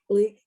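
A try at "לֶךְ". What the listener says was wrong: No, the last one is the snake's eyes. Lech.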